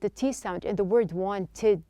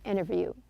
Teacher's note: Now notice that the T sound in the word wanted, the T is dropped. This is not an uncommon practice when the T follows an N.